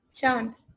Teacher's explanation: चांद बोलने से नाक और मुंह दोनों से हवा आ रही है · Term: चंद्रबिंदु